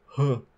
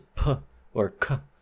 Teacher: So huh, it is very open. And when we have aspirated sounds, such as puh or kuh, our glottis also spreads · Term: spread glottis